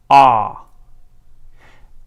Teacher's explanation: With ah, it's a lower vowel, pronounced lower in the mouth. So in order to achieve that, I like to encourage my students to focus on their jaw height and achieve a low, very open jaw height for ah.